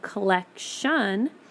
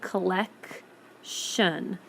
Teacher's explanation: you hear the hard C collec shun the T kind of the T sound disappears and then you hear the shun sound